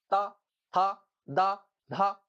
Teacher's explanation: जीभ का अगला भाग कहाँ पे टकरा रहा है? दांतों पे। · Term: दंत ध्वनिया